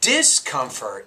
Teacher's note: lead to discomfortable to discomfort the stress there is actually discomfort you actually put stress on that prefix